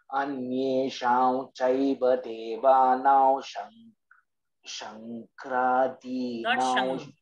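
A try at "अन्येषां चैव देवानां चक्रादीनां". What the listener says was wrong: There is no anuswara. Chakra. chaiva anusvara nyakara. There is no makara. It is chavarga. Chavarga's anusvara is nya. Anyesham chaiva.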